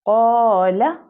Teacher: Reason is یہاں پر تھک قاف ہے. ہم جیسے قاف کو پروناؤنس کریں گے الف اس کو فالو کرے گا. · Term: تفخیم